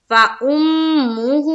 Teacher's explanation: فا کے اوپر زبر کا قاعدہ جلد ادا کریں گے اور حمزہ کو میم سے ملاتے ہوئے کیا کریں گے غنہ کریں گے تو یہاں ٹھہراؤ ہوگا اور ہو کو ایک الف کے باقدر کھینچنا ہے